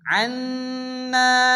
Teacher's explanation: উচ্চারণ পড়তে হবে, ওয়াফু আন্না, নুনের উপরে তাসদীদ নুন গুন্না ওয়াজিব, না আলিফ মাদ্দা একলিফ টেনে পড়তে হবে